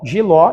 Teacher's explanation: jiló é oxítona porque a última sílaba é mais forte